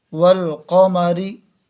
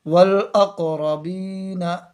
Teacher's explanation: اظہار مطلب لام کو ظاہر کر کے پڑھیں گے، لام کی آواز کو صاف طور سے پڑھیں گے۔ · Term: لام تعریف کا اظہار